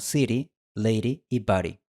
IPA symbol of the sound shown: ɾ